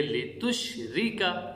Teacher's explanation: را کے نیچے زیر اگر آ جائیں یا دو زیر آ جائے تو اس را کو باریک ادا کریں گے